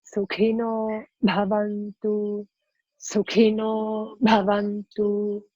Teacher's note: The ka is aspirate and the bha is aspirate. So there you have a little puff.